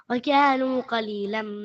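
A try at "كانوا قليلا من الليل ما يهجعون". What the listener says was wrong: كانوا بدون الواو بدون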